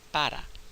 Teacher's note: And also the R is really an alveolar flap, the same thing that we saw in English in words like better and little.